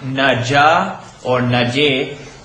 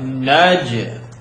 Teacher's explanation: the bounced sound is like one third of an ah. So it's not naja or naje, but naj.